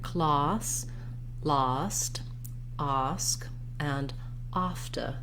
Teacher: you can hear in that ah my mouth is more open my tongue is down and back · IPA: /ɑː/